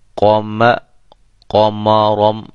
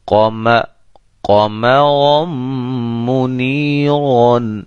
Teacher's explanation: قاف اور را یہ دونوں موٹے ہیں اور ان کے درمیان میں میم باریک حرف آ رہا ہے، لہذا بڑے اہتمام کے ساتھ ہم اس کو پڑھیں گے تاکہ میم بھی قاف کے ساتھ موٹا نہ ہو جائے۔ قوم قومارم یہ غلط ہوگا، قومارم میم بھی موٹا ہو رہا ہے۔